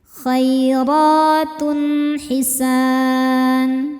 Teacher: Cara bacanya dipanjangkan dua harakat. Khoirotun, tun ada hukum izhar halqi karena ada tanwin dhammah menghadapi huruf halqi atau tenggorokan yaitu ha. Cara bacanya tanwin dibaca jelas.